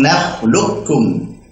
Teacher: Ketika qaf sukun ketemu dengan kaf, ya, diidghamkan qafnya ke kaf. Dan kita baca dengan idgham kamil, sempurna.